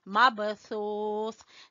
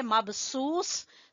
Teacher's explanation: سا کو زبان کی نوک اور سامنے والے 2 دانتوں کے سرے آپس میں لگیں گے تو سا ادا ہوگا ، مبثوث، سیٹی کی آواز نہیں آنی چاہیے، اگر آپ پڑھیں